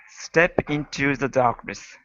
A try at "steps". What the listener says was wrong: Okay, give me that S on steps. Steps into the darkness.